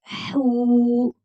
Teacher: حو، حلق کے درمیانی حصے سے ادا ہوگا